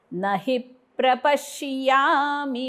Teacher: ही वरती आघात आहे, म्हणजे ही झाल्यानंतर ओठ बंद करायचे.